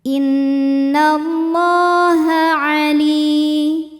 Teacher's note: La mad tabi'i muqaddar karena huruf lam berbaris fathah panjang, maka lam panjang 2 harokat